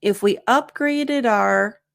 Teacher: Again, if we upgraded our, and notice here we have connected speech, upgraded the D sound connects to the O.